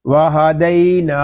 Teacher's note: نون کو ہم ایک الف تک کھینچ کر پڑھیں گے کیونکہ یہاں پہ کھڑا زبر ہے اور کھڑے زبر کو ایک الف تک کھینچ کر پڑھتے ہیں.